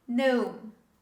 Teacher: In this word, the letter G is considered silent. We don't pronounce the letter G when we say this word.